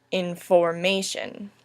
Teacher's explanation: Information first has a stressed, an unstressed, a stressed, and then an unstressed syllable.